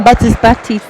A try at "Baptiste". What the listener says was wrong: You don't pronounce the P.